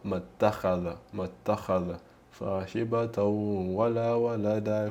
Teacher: avendo questo Hamzatul Wasl, quindi non lo prolunghiamo più, ma lo facciamo corto